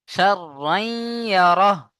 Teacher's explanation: শিন আর রা জবর শার, রা ইয়া দু জবর রাই, শাররাই। তানবিনকে ইয়ার সাথে মিলিয়ে গুণনা করতে হবে ইদগামে নাকিস